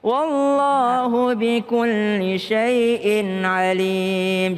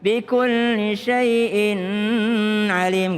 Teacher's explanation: Kalau ada tanwin, wallahu bikulli syai'in, in ketemu dengan ain itu tidak berdengung.